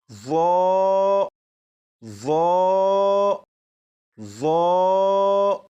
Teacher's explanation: اب اسے پڑھتے ہوئے 2 باتوں کا خیال رکھیں گے۔ نمبر 1، زبان دانتوں سے بھی لگے۔ نمبر 2، آواز کو بھی موٹا کر کے پڑھیں گے۔